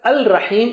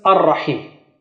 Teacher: So when you attach them, lam loses its sound, so its sign is gone. So al, because lam is conflicting with r, so lam says take my sound and give it to ra. · lam is conflicting with r, so lam says take my sound and give it to ra. So it gives its sound to ra. So instead of al-Rahim, it becomes ar-Rahim.